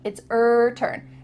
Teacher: the h at the beginning of his and her is cut off